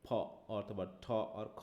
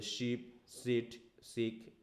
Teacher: For another type of consonant, while producing sound, the vocal cord remains comparatively static, that is, it doesn't vibrate, which makes a much sharper tone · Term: voiceless sound